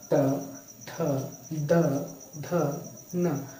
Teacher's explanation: जो आपकी जिह्वा है वो क्या करेगी, ये ऊपर वाले दांत को टच करेगी। तो इसलिए क्या कहते हैं इसे, दंत वर्ग का या त वर्ग क्या है, दंत वर्ग, दंत को स्पर्श करती है जीवा।